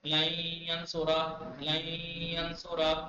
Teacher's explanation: لیکن اگر یمون ہو یا میم واو نون تو ادغام ہوگا لیکن غنہ کے ساتھ یعنی نون کی آواز نون ناک سے آئے گی. لن ینصرا لن ینصرا نون صاف نہیں بولیں گے ناک سے بولیں گے لن ینصرا لن ینصرا.